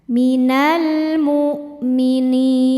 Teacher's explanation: Maka nun yang kasrah dipanjangkan boleh dua atau empat ataupun enam harakat asal konsisten dalam sekali baca.